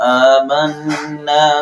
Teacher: حمزہ کے اوپر کھڑی زبر ہے تو ایک الف کے برابر اس کو لمبا کریں گے